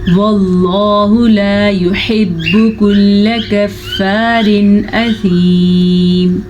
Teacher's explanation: واللہ لفظ اللہ کو پر پڑھیں گے. لفظ اللہ سے پیچھے زبر ہے اسی لیے